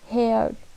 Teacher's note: long, mid, central, spread vowels